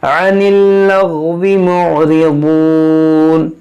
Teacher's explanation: आइन को निकालें वस्ते हल्क से